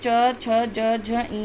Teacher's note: उसके बाद आता है च, छ, ज, झ, इया यानी च वर्ग, जो तालु से बोला जाता है।